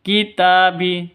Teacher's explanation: ta panjang dua ketukan karena ada Alif diawali dengan fathah